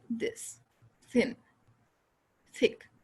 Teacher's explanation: Put your tongue between your top and bottom teeth, यानी दोनों के बीच में. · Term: th sound